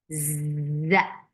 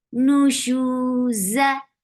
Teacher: Z has buzzing sound, and there is no part of seen into it. There is no S sound, but only Z.